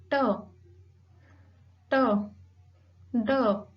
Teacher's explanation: alveolar with the help of teeth ridge and tip of tongue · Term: अल्वेलर साउंड्स